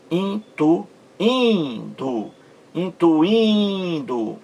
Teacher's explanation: Mais forte aí, penúltima sílaba. Nesse I aí, no segundo I. · Esse I aí forma também um hiato em relação à vogal anterior.